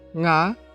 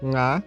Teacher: se eu digo nga, um tom alto, significa 5. Se eu digo nga, tom baixo, significa eu